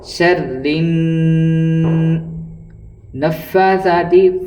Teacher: فا کے اوپر کھڑا زبر ہے، چونکہ وہاں 1 الف کے برابر کھینچا جائے گا